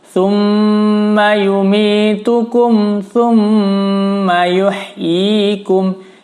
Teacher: Thumma, mim tasydid harus ditahan. Mim gunnah hukumnya. Jadi harus ditahan, didengung 4 ketukan.